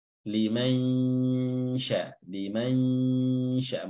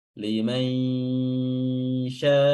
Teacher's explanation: Hukumnya adalah ikhfa, ikhfa hakiki. Cara mengikhfakannya adalah dengan meletakkan lidah kita pada makhraj huruf shin ketika nun sukun terlafazkan.